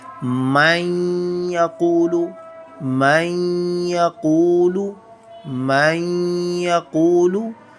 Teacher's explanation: Here man, we produce the sound of noon clearly outside, but we are taking example of ikhfa. Here we hide the sound of noon in our nose. · Here is the second example of noon sakin. Here we hide the sound of noon sakin in our nose and called ikhfa.